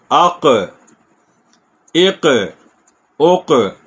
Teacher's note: کاف پہ کے مخرج پہ زبان لگی پھر ہلکی سی اوپر اٹھے گی